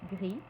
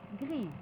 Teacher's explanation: exemple petit petite quand l'adjectif masculin se termine par un S on ne prononce pas le S au masculin mais on le prononcera au féminin mais de manière très atténuée